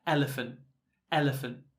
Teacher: you can almost get rid of the T for British pronunciation